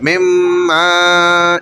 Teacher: نون مدغم ہو گیا، میم میم میں مل گیا، نون ہٹ گیا بیچ سے